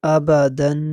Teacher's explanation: اور تنوین کو غنّے کے ساتھ پڑھیں گے، تنوین کو بھی لمبا نہیں کریں گے بلکہ تنوین کو غنّے کے ساتھ پڑھیں گے